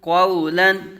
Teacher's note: قاف پر مستعلی متحرک واو ساکن سے پہلے زبر واو لین